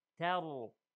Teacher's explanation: Qibilatanta, this is the ikhfa. Then tar, the ta is light, ra is heavy.